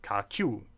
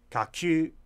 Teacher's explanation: that Tibetan u actually sounds like the German ü there. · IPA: kacyː˥˥